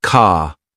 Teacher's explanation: For example, in American English, car sounds like car, while in British English, it's more like ca. It's a soft, almost invisible R sound.